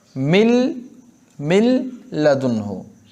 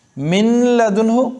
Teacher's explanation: इसमें नाक में ज़रा भी आवाज़ नहीं जाती, खालिस लाम की तरह पढ़ते हैं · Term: इदगाम बिला गुन्ना